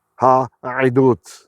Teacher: I didn't fully pronounce the ayin in the ha'idut because worrying about the pronunciation, the cantillation mark there.